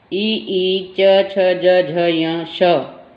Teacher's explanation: इनका उच्चारण मुख के ऊपरी भाग, जो मुंह का ऊपरी भाग है जहाँ वो चिकना लगता है, वहाँ से हमारी जीवा वहाँ स्पर्श करती है। उस ऊपरी भाग को, चिकने भाग को तालु कहते हैं।